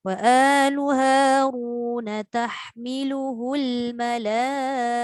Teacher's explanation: Na tu tak panjang dekat Haruna tu.